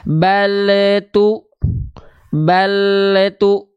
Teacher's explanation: Bunyi memantul itu terindikasi dari bunyi vokal EU di ujung pelafalan